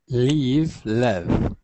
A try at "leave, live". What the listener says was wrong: Not leave, lev, but leave, live. Live.